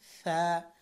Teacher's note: সা জিহ্বার আগা এই উপরের দাঁতের আগার সাথে লাগাতে হবে